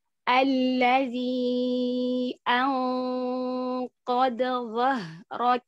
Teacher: A-nya tipiskan. Jangan ikutan tebal dengan dengung.